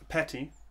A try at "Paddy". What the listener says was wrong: Paddy. No, Paddy with a D. With a D.